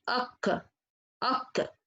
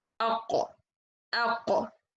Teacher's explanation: I will use the farthest part from the back to hit the upper mouth, and I will bring letter qaf right and try to direct the pressure of the sound to the roof of the palate.